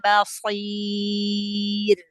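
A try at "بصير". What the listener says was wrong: Basir. Ra-nya tebalkan lagi.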